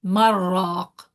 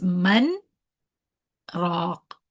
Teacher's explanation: In sakt, you make a stop in the sound, but not the breath.